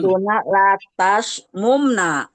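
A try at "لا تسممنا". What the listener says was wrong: Bukan bukan mum ya. Latas, mam, iya, bukan latas mumna, salah. Harokatnya salah. Iya, kenapa begitu? Karena wazannya bukan. Kalau dia ya tengahnya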